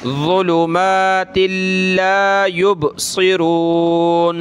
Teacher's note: با حروف قلقلہ میں سے تو ہلائیں گے اس کو